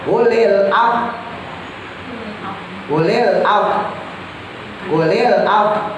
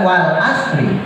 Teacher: Jadi seakan-akan ucap af wa, gitu ya, tapi a-nya hilang